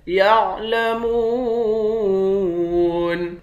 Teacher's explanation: یعلمون، میم کے بعد واو ہے، واو حروف مدہ ہے، ایک الف کے مقدار کھینچیں گے، آخر میں نون ساکن ہے۔